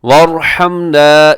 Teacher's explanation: یہاں را موٹی پڑھیں گے کیونکہ را ساکن سے پہلے واو کے اوپر ضمیر ہے اور آپ نے را کو پر پڑھنا ہے.